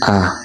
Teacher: Vokal rendah, lidah berada di posisi rendah, contohnya A. Perbedaan tinggi rendahnya lidah inilah yang menyebabkan bunyi vokal terdengar berbeda.